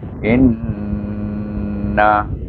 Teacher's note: Di hamzah bawah i dan ditasydid dengan huruf nun, maka kita kena baca dengan gunnah dua harakah. Dipanggil hukumnya wajibul gunnah, iaitu inna.